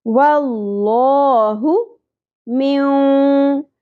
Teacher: واللہ من نون ساکن کے بعد حروف یمنو میں سے واو آ گیا. ادغام مع الغنہ کرنا ہے ملاتے ہوئے پڑھنا ہے اور ناک میں آواز کو ٹھہرانا بھی ہے